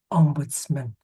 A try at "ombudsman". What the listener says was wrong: Mun, more of a mun. So look, perhaps a U, maybe mun, maybe I don't know, something like that. Ombudsman. And I think when it's at the beginning, man's at the beginning, say Manchester being man, we really do say man when it's at the beginning, pretty much. When it's on the end, it tends to be strangely mun.